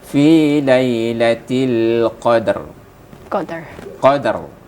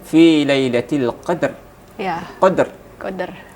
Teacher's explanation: Ini masih huruf ro-nya ini dibaca tarqiq bukan, dibaca tafkhimnya bukan, masih pertengahan ini.